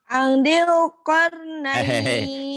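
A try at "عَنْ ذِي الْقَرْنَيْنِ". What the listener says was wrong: Itu kurang tenang. Kurang tenang. Di ikhfa itu ingat-ingat ya. Namanya idgham bi gunnah, ikhfa syafawi itu ditahan. Jadi kamu tadi Angdil. Nunnya ketemu dal ikhfa. Angdil Qarnain.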